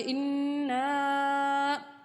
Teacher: یہاں پہ نون مشدد ہے، ان اس طرح کی آواز آنی چاہیے، تھوڑی دیر رک کر پڑھنا چاہیے